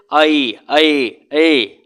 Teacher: अगर हम अ के साथ ई को जल्दी जल्दी दोनों को मिक्स करके बोलने की कोशिश करें तो देखिए ए का साउंड आएगा, जैसे ऐ ऐ ए।